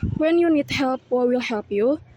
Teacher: The first word help has falling intonation, indicating the end of an idea or information. The second word help has rising intonation, indicating that the question is still unfinished or requires a response.